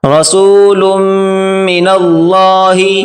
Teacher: رسول، لام اور میم آپس میں ملا کر پڑھیں گے